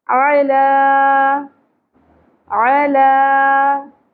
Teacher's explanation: عین کو وسط حلق سے ادا کریں گے. زبر کو زیادہ نہیں کھینچنا لیکن لام کے اوپر کھڑی زبر ہے ایک الف کے برابر کھینچیں گے.